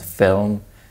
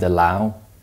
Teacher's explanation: it's velarized this means the back of the tongue Rises producing a slightly different sound this is commonly known as the dark l when the LA